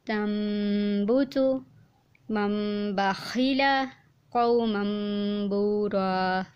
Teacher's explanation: نون ساکن و تنوین کے بعد اگر با متحرک آ جائے، خواہ ایک کلمے میں یا 2 کلموں میں، تو نون ساکن و تنوین کو میم سے بدل کر اخفا اور غنہ کے ساتھ ادا کریں گے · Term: اقلاب